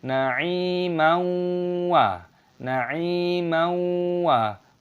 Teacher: Perpanjang dua ketukan dan di sini ada fathah tanwin bertemu dengan wawu. Aturannya adalah idgham bighunah, menyatu dan disertai dengan hum.